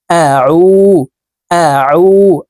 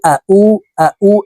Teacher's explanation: আইনকে হালুকের মধ্যখান থেকে চাপ দিয়ে উচ্চারণ